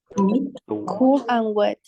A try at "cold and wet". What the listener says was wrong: cold and wet. Recuerden, porque si decimos cool, fresco, ¿eh? Cold. Pronunciation, cold.